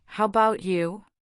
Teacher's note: The A in about becomes a schwa sound, a quick, unstressed making it bout.